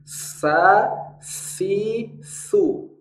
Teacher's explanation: makhrajnya adalah ujung lidah di ujung gigi seri atas dan huruf saa adalah huruf yang selalu tipis